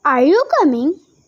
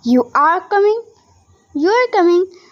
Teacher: In English, we often use a rising tone. At the end of the question, Are you coming? This is different from the falling tone we use for a statement.